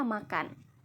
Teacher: Lambang fonetis M kecil, bunyi sengau bilabial bersuara